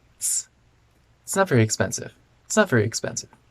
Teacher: we want to de-stress it's and stress not · so we link it's together and it just becomes it's not very expensive it's not very